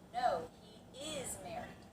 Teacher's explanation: You're bringing out the word is because there is confusion, is or isn't. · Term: Stressing the word is